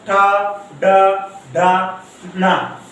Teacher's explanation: आपने देखा जीभ पलट कर छू रही है